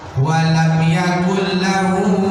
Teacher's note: jadi seolah-olah hilang nunnya, yang nampak bunyi lam